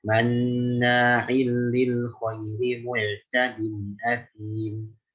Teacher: Jelaskan di situ ain ada manna' sama mu'tad. Jangan sampai jadi hamzah ya.